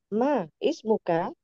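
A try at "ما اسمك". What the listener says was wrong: Nah, di sini bisa disambung. Sambung. Hamzah wasalnya tanpa dibaca.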